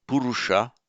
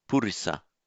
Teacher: In Pali, the second u changes to I. So purisa. So it's that purisa that you will occasionally see shortened to posa.